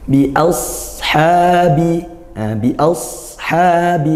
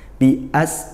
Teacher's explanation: bedanya kalau sod tebal, pangkal lidah naikkan. Pangkal lidah itu mana? Lidah yang belakang ya, yang belakang, yang dekat dengan tenggorokan